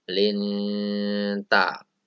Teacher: Pembacanya adalah samar. Kalau di kita yaitu di antara N dan NG. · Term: ikhfa